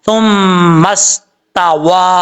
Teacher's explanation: अब यहाँ पर वाओ को पढ़ते वक्त आपने होंठ गोल करने हैं, ऊपर खड़ा जबर है, फिर मद है, मद मुनफसिल कहा जाता है इसको, अढ़ाई अलिफ के बराबर इसको लंबा करके पढ़ेंगे